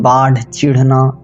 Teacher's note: ये जो ढ ध्वनि है दोस्तों, यह ड़ ध्वनि का ही महाप्राण प्रतिरूप होता है